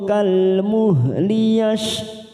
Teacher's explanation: kasrah tanwin bertemu kaf, namanya ikhfa hakiki, kita samarkan 3 ketuk